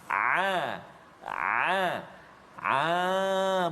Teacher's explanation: Ain nafas tertahan semasa menyebut hurufnya disebabkan tekanan yang kuat pada makhrajnya. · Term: huruf ain